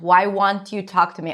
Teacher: So won't. Make sure you pronounce the long O sound. Otherwise, it might sound like want.